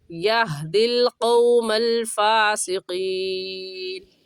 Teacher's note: قاف موٹے حروف میں سے ہم موٹا کر کے پڑھیں گے